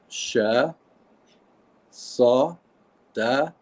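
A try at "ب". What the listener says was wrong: Then ba, ba. This is da. This is ba because we don't da. Want to mix it with this one. This one here okay. is dal, da. This is bad, ba.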